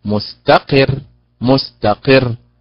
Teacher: لابد من الضغط على حركة القاف ليظهر التشديد على الراء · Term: النبر